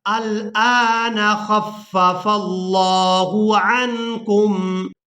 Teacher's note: हमज़ा लाम ज़बर अल, हमज़ा खड़ी ज़बर आ, अल आ, नून ज़बर न, अल आन खफ़फ़ल्लाहु خفف اللہ، یہاں پر فا کو لفظ اللہ کے لام کے ساتھ جب ملائیں گے تو لفظ اللہ کے لام کو پورا ادا کریں گے، کیونکہ اس سے پہلے والا جو حرف ہے اس کے اوپر ہے زبر، تو اب یہاں پر لفظ اللہ کے لام کو پورا ادا کیا جائے گا۔